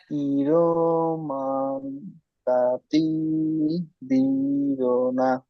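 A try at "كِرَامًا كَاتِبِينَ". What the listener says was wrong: মান, এখানে আপনার গুণনা করতে হবে। মান কাতিবিনা। হ্যাঁ, এবার ইজরা করেন। নুন সাকিনে এই তানবিনের পরে হুরুফে ইকফার।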